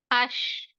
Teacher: शीन में जबान फैली हुई होती है, जबान फैली हुई होती है हर्फ शीन में। अश। सिफत सफीरा है, सिफत हम्स है, जो दोनों इम्पोर्टेंट रहते हैं शीन में।